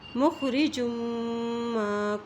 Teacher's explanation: میم کے اوپر جب شد آ جاتی ہے تو وہاں پر غنہ کرتے ہیں، جیم کی دو پیش کو میم کے ساتھ ملاتے ہوئے غنہ کرتے ہوئے پڑھیں گے۔